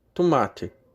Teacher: Tomate passa a ser tomate, com o T levemente sibilado.